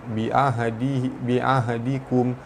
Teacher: mim mati bertemu waw, hukum dia izhar syafawi dibaca terang jelas tanpa dengung